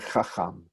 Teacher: stress on the second syllable, even though this one does have a double vowel. Double kamatz usually does not give me stress on the first syllable.